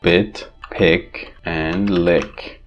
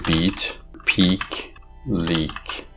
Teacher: keep your mouth muscles more relaxed and less tense and open your mouth, drop your jaw a bit more when pronouncing I, like bit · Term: lax vowels